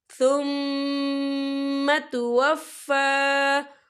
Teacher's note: یوم القیامہ ثم توفی، ثم میم مشدد ہے، یہاں پر غنہ ہوگا، اور توفی فا کے پر کھڑی حرکات ہے، تو ہم اسے 2 یا 3 حرکت کے برابر کھینچ کے پڑھیں گے